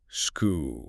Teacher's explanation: you're gathering the breath, the continuous hiss of the S and pushing it outward until it strikes the hard barrier of the K.